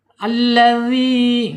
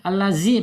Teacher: dzal ini ada di ujung lidah. Ujung lidah menyentuh ujung gigi seri. Ya. Keluarkan sedikit lidahnya ujungnya ya.